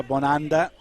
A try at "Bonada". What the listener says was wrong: Bonada. No N in there. Is there an N? Isn't it an A?